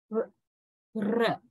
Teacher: Your tongue position, the tongue curls little bit back, right? Pointing towards the palatal region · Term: retroflex